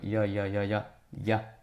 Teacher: 근데 이 반모음 소리 이 소리를 낼 때 이거를 빠르게 말하면 이야 이야 이야 야 야가 되죠. 이런 식으로 이중모음이 만들어졌다고 봅니다.